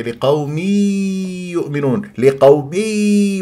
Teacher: تنوين كسر جاء بعدها ياء يؤمنون لا تجعل ادغام بغنه